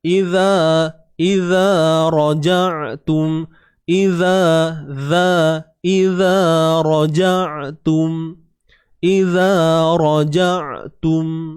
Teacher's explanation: huruf zal keluar sikit ujung lidah